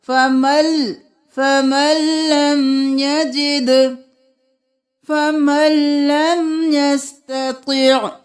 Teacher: سورۃ المجادلہ آیت نمبر 4 فمن لم یجد نہیں کریں گے. میم کے ساتھ لام کو ملائیں گے. یہاں پر ادغام بلا غنہ ہوگا.